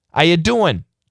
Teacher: The non-rhotic R is absolutely the most common pronunciation for how you doing and what are you doing? You are not going to hear an R, but you're going to hear the ing in the verb.